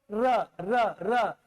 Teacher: आपका जीभ जो है लुढ़क रहा है · तो र सघोष भी है वर्त से है लुंठित है सघोष है · सघोष है र जो है य र लव अल्प प्राण है महाप्राण तो नहीं है क्योंकि शवास कम मात्रा में निकल रहा है